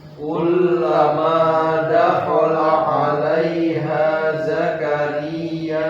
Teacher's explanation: Hati-hati, dakhala nggak panjang, nggak ada tanda panjang. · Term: pendek